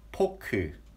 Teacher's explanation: We don't have F pronunciation. We say 포크. It sounds like a P.